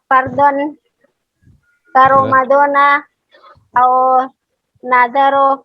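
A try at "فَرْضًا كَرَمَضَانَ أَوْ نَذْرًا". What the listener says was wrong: Tanwin Bu. Au nadaron. Ramadana au nadaron fala Buddha.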